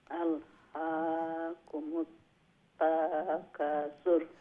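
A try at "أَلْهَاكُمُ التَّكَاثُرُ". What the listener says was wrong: তা লম্বা হবে না, হ্যাঁ, খা লম্বা হবে, তা হবে না। তাকাসুর।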